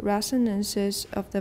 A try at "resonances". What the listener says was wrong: Okay, resonances, not ra, re. So watch your s sound, because it often goes to ah. Resonances.